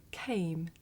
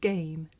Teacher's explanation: this voiceless sound that you hear at the beginning of the word came and its voiced partner that you hear at the beginning of the word game